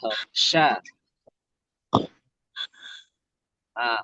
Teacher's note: Huruf shin itu yang keluar dari lidah tengah.